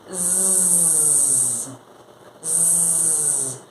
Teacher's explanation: Zzz, zzz. Você sente as suas cordas vocais vibrando. Não é a sua garganta mexendo, é uma vibração mesmo. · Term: som vozeado